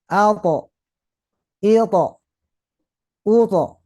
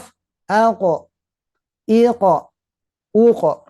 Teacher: saat mati maka dia akan bunyinya tebal tidak akan ke e karena pangkal lidah karena disertai dengan pangkal lidah yang diangkat a